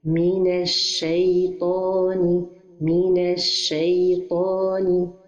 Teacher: This is a mistake because we have to merge the letter lam with the letter shin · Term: idgham